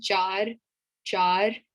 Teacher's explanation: you kind of roll your R's. So it's not char.